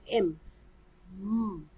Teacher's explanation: sound the same putting your two fingers on your throat and you produce the sound of m still there is a vibration so it is voiced